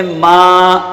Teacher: ہاں ما کھینچ کے ایک الف کے برابر کھینچ کے پڑھیں گے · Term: حروف مدہ